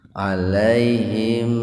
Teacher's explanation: Pertemuan antara sukun mim dan lam. Jadi, mim terbaca dengan jelas. Shafawi, di bibir. Tahan selama dua ketukan agar terdengar jelas. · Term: Idhar shafawi